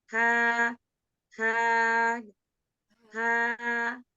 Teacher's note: huruf H itu sebelum kita beri harokat juga memang dia keluar dari pita suara ya yang sudah terbuka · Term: huruf Ha